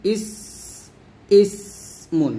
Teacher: ইসমুন, এই সিন উচ্চারণ করতে গিয়ে যেন আমরা কলকলা না করে ফেলি, ইসে এরকম যেন না হয়, এবং সিন উচ্চারণ করতে গিয়ে যেন আমরা সদের মতো মোটা না করে ফেলি, ইস, ইসমুন, এরকম।